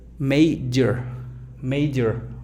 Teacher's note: Sonido schwa, major, major. O sea, el sonido schwa es tan sutil que pareciera que se lo brincan